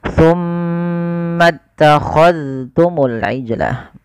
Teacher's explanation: jangan diidghamkan ke huruf ta, tapi zalnya ditampakkan dengan jelas